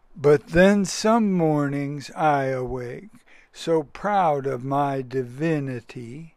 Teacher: a beat that is an unaccented syllable and then an accented syllable it's just that simple that's one i am if you stretch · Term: iambic pentameter